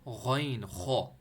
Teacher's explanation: غین موٹا پڑھنا ہے، خو کو موٹا پڑھنا ہے، دونوں اوپر اپر تھوڑ سے نکل رہے ہیں آپ کے